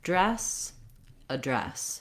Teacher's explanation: syllable so it's long it has the f vowel and then you want to have just a really short unstressed uh sound for the letter a